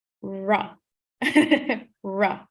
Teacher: Yeah, as if you're kind of swallowing your tongue a little. Yeah, so it feels like the tongue is slightly cupped and pushed up towards the back. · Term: retroflex R